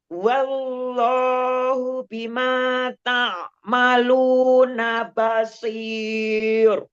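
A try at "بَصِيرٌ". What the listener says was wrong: Basir, basir. Roknya ditipisin. Basir. Basir. Tipis. Dia tipis ya, karena ro sukun karena wakaf sebelumnya sukun, sebelumnya lagi kasroh.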